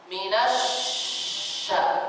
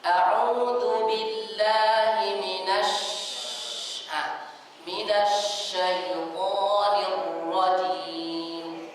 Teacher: Di saat kita membaca huruf shin bertasydid, maka kedengaran suara tersebar itu lebih kedengaran besar. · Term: tafasyi kubra